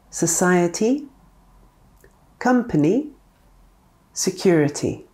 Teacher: Sometimes the schwa appears in front of a Y.